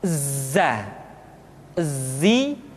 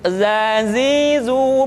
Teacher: dalam huruf latin tetapi ingat huruf dza bersifat Al Jabbar artinya ketika kita mengucapkan huruf dza suara kita mengalir akan tetapi nafas tidak boleh mengalir